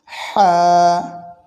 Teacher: কণ্ঠনালীর মধ্যস্থান থেকে এটি উচ্চারণ হয়